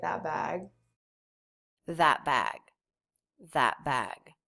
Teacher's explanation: with a stop T the vowel is not reduced